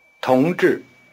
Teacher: The tone pattern is rising falling.